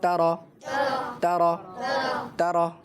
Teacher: تا کو اپنی جگہ باریک پڑھنا ہے اور را کو اپنی جگہ موٹا، باریک نہیں موٹا پڑھنا ہے